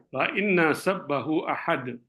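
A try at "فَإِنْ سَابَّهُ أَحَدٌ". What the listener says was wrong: Kasih baris Pak. Ahad, jangan dimatikan.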